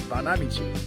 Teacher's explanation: it actually is Accent on the second syllable